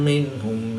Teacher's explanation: نون ساکن کے بعد ہا حروف حلقی میں سے ہے تو یہاں پر اظہار ہوگا، یعنی نون ساکن کو ظاہر کر کے پڑھیں گے